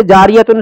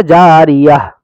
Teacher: ہائے ساکنہ کہتے ہیں یعنی یہ گول تا جو ہے یہ ہا بن جائے گی